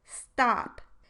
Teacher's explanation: follows an s sound in the onset of a syllable however the voiceless stop will become unaspirated or it won't have as much of a puff of air following it